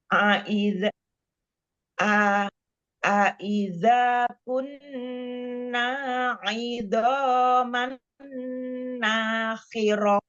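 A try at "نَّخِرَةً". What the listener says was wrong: Nakhirah, jangan dipanjangkan naknya. Nakhirah. Ulang.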